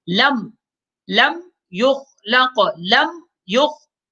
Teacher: میم ساکن کے بعد میم اور با کے علاوہ کوئی اور حرف ہے، تیسرا حرف یعنی کہ یا ہے، لہٰذا میم میں غنہ نہیں ہوگا